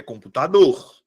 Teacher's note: A minha sílaba tônica é a última.